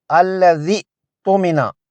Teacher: اگر پچھلے لفظ یعنی الذی سے ملا کر پڑھیں گے تو حمزہ وصلی اور خالی یا گر جائیں گے، نہیں پڑھے جائیں گے، اور صرف الذی تمنا پڑھا جائے گا، الذی تمنا پڑھا جائے گا۔